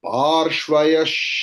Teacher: विसर्ग के बाद श है तो विसर्ग का प्रोनाउंसिएशन श की तरह होगा